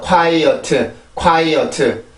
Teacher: 영어로 보면 이음절이에요. 이음절. 그리고 강세는 앞에 있는 음절에 있고요. 그렇죠? 그래서 리듬이 두 개, 뒤에는 순수 음절이죠.